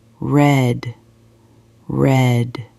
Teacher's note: tries to say red. He pulls his tongue back. He rounds his lips a little.